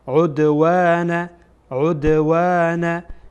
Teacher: اینجا دال ساکنه و از حروف قلقله میکنیم.